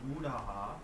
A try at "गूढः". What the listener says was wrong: गूढः not gudaha गूढः